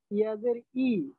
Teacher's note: ইয়ার উচ্চারণটা কিন্তু অনেকটা হামজার দিকে চলে গেল। ইয়াজের ইয়াজের ই উই ই জিহ্বার মধ্যখানটা ব্যবহার করতে হবে।